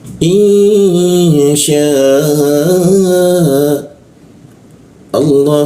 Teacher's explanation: Alif bertemu Hamzah muncul bendera kita panjangkan tiga ketukan